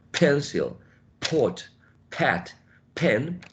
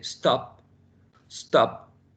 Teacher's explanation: For example, the sound is plosive, p, p. If you put your hand in front of your mouth, you can feel a puff of air. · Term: plosive sounds